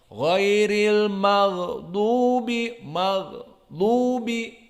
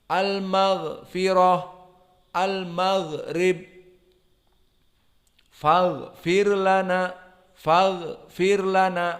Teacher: Maka keluar gha dari segi suara dan rokhawah. Ghairil maghdubi, maghdubi, gha-nya yang ada suara, bukan nafas.